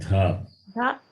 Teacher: The consonant is Mahaprana and the vowel is short vowel.